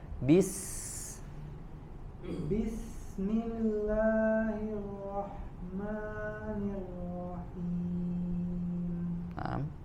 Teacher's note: sifat huruf sinnya sempurnakan, bis dialirkan, jangan ditahan